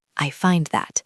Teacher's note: Notice that the D in find is very soft. You almost don't hear it.